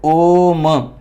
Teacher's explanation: वे स्वर वर्ण जिनका उच्चारण करने में दीर्घ स्वर से भी अधिक समय लगता है यानी की तीन गुना समय लगता है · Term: पलट स्वर